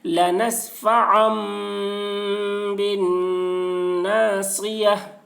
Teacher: گولتا کو حالت وقف میں ہائے ساکنہ سے بدل کر پڑھیں گے